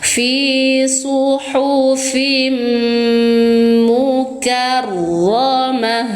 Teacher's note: suara ta berubah menjadi suara ha karena dimatikan